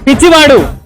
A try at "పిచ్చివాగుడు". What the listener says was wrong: మధ్యలో గు ఉంది భయ్యా.